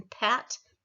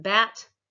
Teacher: Bilabial, I'm putting my two lips together for P as in pat, and B, the voiced as in bat.